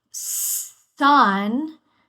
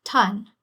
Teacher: So this is when you're going to get a fricative, like a s or and you're going to stop it. So sun, when we stop an S, it turns into a T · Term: stopping